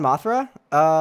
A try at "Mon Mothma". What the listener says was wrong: Mothma. You said Mothra, like Mothra?